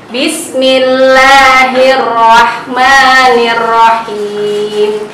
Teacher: Nah, di akhir ayat itu kita baca 4 harokat,